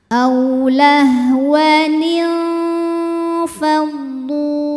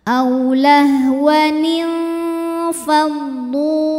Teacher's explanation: Jadi kita siap-siap menuju ke fa, mau bilang fa sambil dengung. Jadi ujung dua gigi seri atas kita sudah menyentuh makhraj fa, yaitu bibir bawah bagian basah. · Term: ikhfa awsat